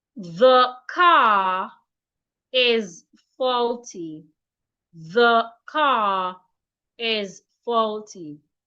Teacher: So when I read or when I speak, instead of saying the car is faulty, I need to pronounce car and is as one word because I have linked the R and the E in is together. · Again, if you have a word ending in letter R in a sentence, if the next word in that sentence starts with a vowel letter, when reading that sentence or when speaking, you are expected to link the R to that vowel